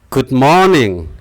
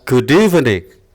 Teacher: good morning, ini stresnya pada syllable yang pertama atau suku pertama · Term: stress